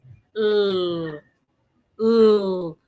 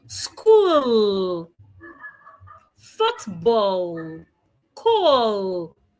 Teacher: To correctly articulate the letter L sound, the tip of your tongue must touch the upper part of your teeth